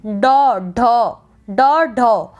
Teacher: इनका जो उच्चारण होता है वो जीभ के आगे के भाग से एकदम झटके के साथ होता है